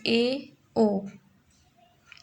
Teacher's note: Half close में मुख द्वार आधा बंद रहता है, जैसे ए, ओ, ये हाफ क्लोज वाले अर्ध संवृत वाले वर्ण रहेंगे।